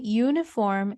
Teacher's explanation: Okay, so when we say uniform, it's similar to we saying uniform, meaning the vowel, it's no longer a vowel sound, it's a consonant sound, since the pronunciation begins with the sound of Y.